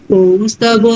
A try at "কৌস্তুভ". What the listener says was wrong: আচ্ছা, ওটা কৌস্তভ নয়, কৌস্তুভা, ত হরফে উকার।